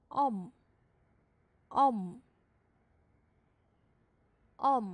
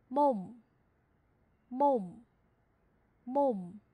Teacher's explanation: 发完之后嘴唇紧闭，那正因为你的嘴唇是闭着的，所以气流从鼻子出去了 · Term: 收音